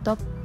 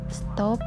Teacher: Kata bahasa Inggris top diucapkan toe dengan T apicodental, tetapi setelah menempatkan S lamino-palatal pada stop, kata tersebut diucapkan stop dengan T juga lamino-palatal. Dengan demikian dapat disimpulkan bahwa T pada stop disesuaikan atau didisimilasikan artikulasinya dengan S yang mendahulinya sehingga sama-sama lamino-palatal. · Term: asimilasi